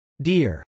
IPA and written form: dˈɪr (deer)